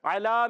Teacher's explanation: واو لین کو بغیر کھینچے نرمی سے پڑھتے ہیں، واو مدہ کو ایک الف کھینچ کر پڑھتے ہیں. اعلیٰ میں عین حلق کے درمیان والے حصے سے، اور کھڑا زبر ہے ایک الف کھینچنا ہے.